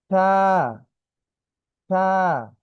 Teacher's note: অর্থাৎ আমার জিহ্বার যে আগাটা সেটি আমাদের দাঁতে লাগবে।